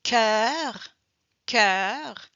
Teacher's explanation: we hear the R, so automatically the sound is more open.